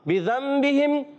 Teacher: تو نون ساکن کو میم سے بدل کر پڑھتے ہیں، اس کو اقلاب کہتے ہیں